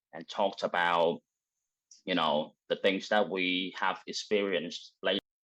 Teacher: I do notice this extra emphasis on that word have